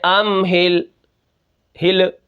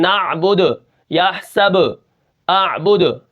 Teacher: آخر میں آوازیں جو ہل رہی ہیں یہ حروف قلقلہ ہیں